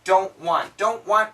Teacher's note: the N cancels the T